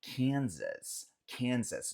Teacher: o S no final a gente fala, mas o S do meio a gente pronuncia com som de Z